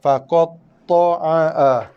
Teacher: satu ain, satu hamzah jelaskan bunyi dia, kerana dua-dua huruf tu berada pada makhraj yang berbeza. Sifat pun berbeza.